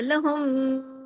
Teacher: تو اس کے ساتھ جو غنہ ہوتا ہے وہ چھوٹا غنہ ہوتا ہے، نون مشدد ہو یا میم مشدد ہو، شد کے ساتھ ہو تو بڑا غنہ ہوتا ہے، جیسا ہم نے پیچھے کیا تشدید والے میم کے اوپر بڑا غنہ کیا لہم، زیادہ دیر تک کیونکہ ڈبل میم ہے